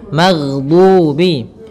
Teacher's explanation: Kesalahan yang sering terjadi adalah memantulkan huruf ghain, yang mana pada dasarnya huruf ghain tidak boleh mantul, tetapi dia memiliki sifat yaitu mengalir suaranya